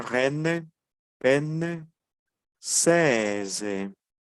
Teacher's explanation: Si se dan cuenta, la E es más abierta que la normal.